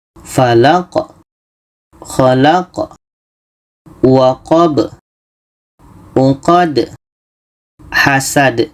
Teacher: Jadi ketika berhenti kita sempurnakan sifat huruf tersebut. Di sini sifat huruf yang terakhir adalah qalqalah. Qalqalah kubra · Kebetulan huruf yang terakhir da mati qalqalah, da mati qalqalah, ba mati qalqalah, qa mati qalqalah. Kelimanya ada huruf qalqalah, ada pantulan.